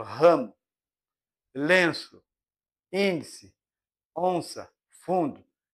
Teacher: As nasais apresentam ressonância nasal. A corrente de ar encontra o véu palatino abaixo e sai principalmente pelas fossas nasais.